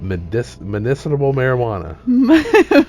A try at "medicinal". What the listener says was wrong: That is not I did not put [laughter] a B in there. Medicinal. No, there is no B.